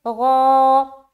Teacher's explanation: اب اجرا، غا، الف خالی سے پہلے زبر ہے، الف مدہ ہوگا، الف مدہ کو ایک الف کے برابر کھینچ کر پڑھیں گے